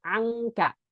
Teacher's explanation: gunah yang tidak melibatkan lidah lisan itu adalah ketika gunahnya murni semuanya Eng dari hidung